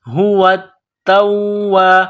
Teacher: تا کے اوپر تشدید ہے، واو کے اوپر تشدید ہے، تو دونوں میں سختی کرنی ہے